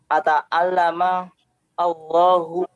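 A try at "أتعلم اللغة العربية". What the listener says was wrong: Allahu itu lam ghain ta'mur gha. Al-lughata. Di sebelum ata'allama ada huruf yang mesti ditambahkan. Antum bilang di situ li ata'allama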